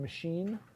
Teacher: So the first vowel in machine is a schwa. It's not high or back. It's not front. It's not high or low. It's kind of mid and central.